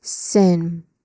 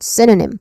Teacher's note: let's start with sin, which is the stressed syllable here. It has a short e vowel sound too.